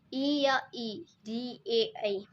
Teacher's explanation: अग्र स्वर बोलने में हमारा जीभ का भाग, आगे का भाग सक्रिय रहता है, इसलिए उनको अग्र स्वर बोलते हैं।